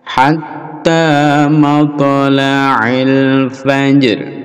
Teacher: Faj, lalu ada ro, ro dibaca setengah atau dibaca rendah